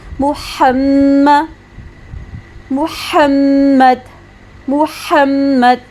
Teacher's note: میم شد پہ گنہ بھی ہو رہا ہے، محمد محمد محمد، ہا میم زبر ہم، ساکن کر کے پڑھا۔